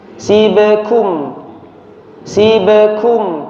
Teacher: huruf ba ketika sukun dipantulkan ya, qalqalah. Namun tidak sampai suaranya terputus, bukan si be, bukan si be tapi si be.